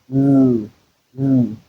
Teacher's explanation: the air will rush through the side of the tongue, and then the tip of the tongue will make complete contact to the alveolar ridge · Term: alveolar lateral